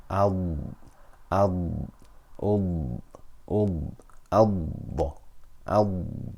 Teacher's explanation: we have to hold it and extend it a little bit we will feel the sound travel from the side of our tongue to the tip of our tongue until the tongue lightly touches the gum line at the front of the mouth